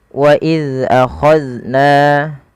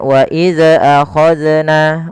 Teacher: Jangan wa iza akhadna, nah, memantul zalnya. Karena salah satu sifat zal itu tidak boleh mantul, karena zal bukan huruf-huruf qalqalah, maka tidak boleh terpantulkan ketika melafalkannya.